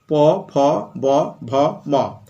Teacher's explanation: স্পর্শ করে ঠোট নিচের ঠোট উপরের ঠোটকে অথবা উল্টোটাও হতে পারে ঠোট পরস্পর পরস্পরকে স্পর্শ করে তাদেরকে বলা হয় অষ্ঠ ওষ্ঠ ব্যঞ্জন ধ্বনি